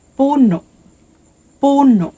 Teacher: At sa dulo na may impit na tunog